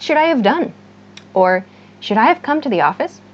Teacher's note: Native speakers reduce this have to an of sound. So this is so common that many native speakers think this have is really of.